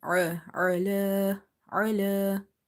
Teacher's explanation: Ain, you have to read from the middle of your throat, okay, with the squeeze sound.